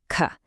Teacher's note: for K, the action is way in the back at your soft palate